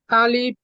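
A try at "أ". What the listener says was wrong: আলিফ নয়, ও হামজাটা উপরে আছে, হামজা আলিফ, হামজা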